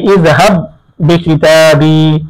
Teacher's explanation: এখানে প্রথম বা সাকিন, পরের হরফ শব্দের বা হরকত যুক্ত, তাহলে দ্বিতীয় বায়ের মধ্যে প্রথম বাকে ইদগাম করতে হবে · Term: ইদগামে মুতামাসিলাইন